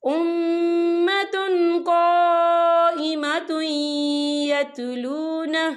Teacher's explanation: اور آگے دیکھیں قائمۃ، تا کے پر تنوین ہے اور تنوین کے بعد جو ہے یا آ رہا ہے، اور یا جو ہے حروف یرملون میں سے ہے، تو یہاں پر ادغام ہوگا اور ہم اسے تھوڑا سا غننے کے ساتھ پڑھیں گے